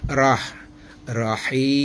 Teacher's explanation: Tafkhim. Istilah tajwidnya tafkhim. Dibaca tebal ya.